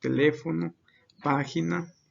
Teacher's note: son las que llevan acento en la ante penúltima sílaba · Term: palabras esdrújulas